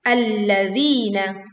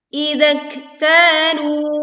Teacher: panjangkan huruf zal yang pertama 2 harokat, begitu juga zal yang kedua dengan panjang 2 harokat